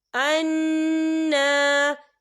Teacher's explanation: یہاں نون مشدد بھی ہے اور یہاں پر کھڑی حرکات بھی ہے، ہم یہاں غنّہ بھی کریں گے اور تھوڑا سا کھینچیں گے بھی